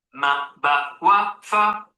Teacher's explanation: Ma ba wa fa are from the lips.